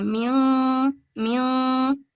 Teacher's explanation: नाक से इसका फ्लो डाउन नाक में नीचे की तरफ होता है। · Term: इख्फा